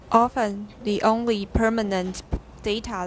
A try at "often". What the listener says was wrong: That's pretty good. Often. Good.